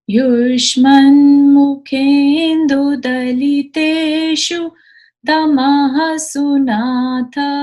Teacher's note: तमः के बाद ये जो विसर्ग है इसकी आवाज आएगी।